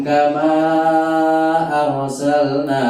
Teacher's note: Ini panjang, kama panjang, arsalnanya panjang, dua ketukan empat ketukan